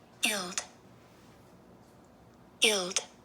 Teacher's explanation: you don't hear very much of the G but it is there and it is a short I